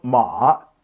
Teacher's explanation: third tone ma 2-1-3